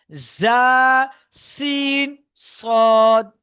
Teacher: জীভের আগা এবং সামনের উপরের এবং নিজের দুই দাঁতের আগার সাথে লাগিয়ে উচ্চারিত হয় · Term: 13 নাম্বার মাখরাজ